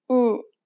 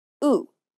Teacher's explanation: The lips are more relaxed for the Korean oo sound than the English oo.